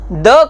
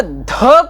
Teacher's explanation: द का जब हम उच्चारण करते हैं तो द अल्पप्राण है, और ध का जब हम उच्चारण करते हैं तो द प्लस ह हो जाता है, इसलिए ध भी महाप्राण है।